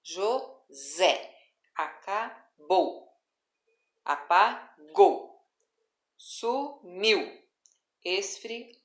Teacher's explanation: no caso desses versos a última palavra tem como sílaba tônica na última sílaba de cada palavra